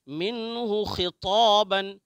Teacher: طا ہمیشہ موٹا پڑھتے ہیں